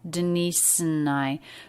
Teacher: the word and is reduced it's just an n sound quick schwa